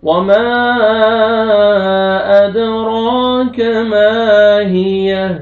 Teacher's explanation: الف سے پہلے فتحہ، میم کو آپ نے کھینچنا ہے، اوپر مدے جائز ہے، 3 سے 4 الف کے برابر آپ نے کھینچنا ہے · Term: الف مدہ